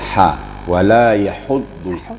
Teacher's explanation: Jadi sifatnya hamas. Ada hembusan anginnya.